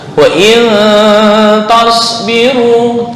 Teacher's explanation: Seperti sin biasa, cuma lidah naik ke atas atau yang disebut dengan isti'ala.